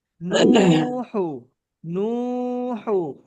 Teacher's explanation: আর ওয়াও মাদ্দাকে একালিপ পরিমাণ টান দিয়ে পড়তে হবে।